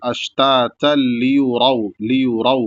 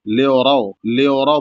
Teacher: را پر زبر ہے تو را کو موٹا بھی ادا کیا جائے گا، اور را کے بعد واو ساکن ہے تو اس کو کھینچا بھی جائے گا ایک الف کے برابر